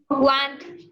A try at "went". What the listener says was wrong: Went. Con E. Went.